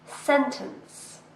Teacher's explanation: This word has 2 syllables and we stress the first one.